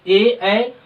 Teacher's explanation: ए, कंठ और तालु दोनों के सहायता से इसका उच्चारण किया जाता है, इसे कंठव्य ताले कहते हैं।